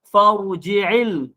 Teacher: Fa ni nipis. Ra ni tebal. Jadi kena nipis dulu barulah ditebalkan ra ni.